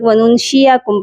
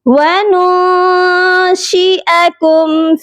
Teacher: امثالکم وننشئکم، واو زبر وا، نون نون پیش نو، یہاں پر ہم اپنی آواز کو ناک میں چھپا کر غنہ کریں گے۔ وننشئکم، حمزہ زبر آ، اس کی آواز بالکل کلیئر ہونی چاہیے۔ بہت سے لوگ وننشئکم پڑھتے ہیں، حمزہ کی جگہ یا کو پڑھ دیتے ہیں، جو کہ درست نہیں ہے۔